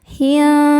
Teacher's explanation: Cara membacanya, nun disamarkan ke tha disertai bunyi dengung dan kesamarannya sama besar. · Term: ikhfa hakiki awsat